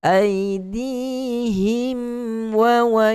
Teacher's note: Aidihim wa matikan, izharkan huruf mim dengan memberikan sedikit saja sifat gunnah yang ada sifat mim di situ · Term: Izhar syafawi